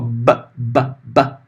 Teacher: então repara Olha o be é um estalinho ó ba ba eu não sopro eu estalo né